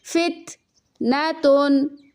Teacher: تا کے اوپر سکون ہے، قلقلہ لیٹرز میں سے نہیں ہے تو یہاں پہ ہم باؤنس نہیں دیں گے بلکہ آواز کو کلیئرلی سٹاپ کریں گے